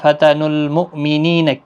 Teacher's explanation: ہے، فتن المؤمنین کسی بھی حرکت والے حرف کو کھینچنا نہیں، حمزہ ساکن کو جھٹکے کے ساتھ پڑھیں